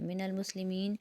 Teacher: مین کے اوپر یا مدہ بن رہا ہے تو اس کو بھی 1 الف کی مقدار کھینچیں گے